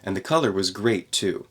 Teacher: connect the two t sounds there at the end of great and the beginning of two